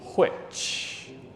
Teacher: you can pronounce this aspirated H